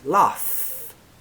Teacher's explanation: F in laugh is unvoiced there is no vibration in the throat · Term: unvoiced F